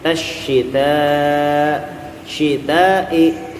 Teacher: syita mad wajib muttasil dibaca 6 harokat